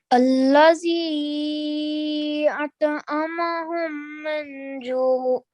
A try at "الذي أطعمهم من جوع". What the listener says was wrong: Okay, so you said minju, so you pronounced the nun sakin sound very clearly, which is why it's wrong. Okay, so the jim is one of the letter of ikhfa, which means to conceal. So ikhfa means to conceal, and therefore this letter is a letter of concealing.